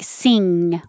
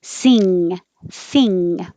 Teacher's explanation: like a hook that is the ing combined like sing when your tongue goes up very high in the back and touches the back of your throat and forces the air through your nose